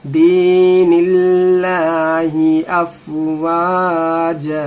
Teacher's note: यहाँ पे लाम को बारीक पढ़ेंगे, अल्लाह के लाम से पहले जेर आ रहा है